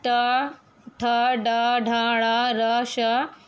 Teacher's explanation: मूर्धा मुख की छत से इसको उच्चारण इसका स्थान होता है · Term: मूर्धन्य